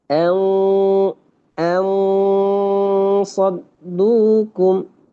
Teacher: Maka ketika di situ en en saddukum, ikhfa'nya pun menjadi tebal karena tebalnya huruf shad.